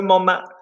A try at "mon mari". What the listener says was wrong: No, you're stressing it too much. Mon mari. Say it for me normally.